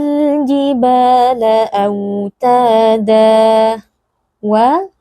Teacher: Jadi yang benar mihada ayat keet7 W wa huruf wau perhatikan huruf wau keluar dari syafatain dari dua bibir